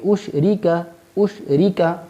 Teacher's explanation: یہاں جو را ہے اس سے نیچے چونکہ زیر ہے لہذا ہم اس کو باریک پڑھیں گے